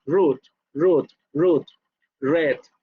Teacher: Esa R, en el habla inglesa se va hacia los alvéolos.